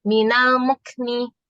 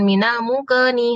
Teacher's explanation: Dan pada saat disukun Bu, kita harus membedakan ini apakah qaf atau kaf. Kalau kaf tidak boleh dikolkolah, tidak boleh memantul. Dia cukup ngeluarin udara sedikit aja.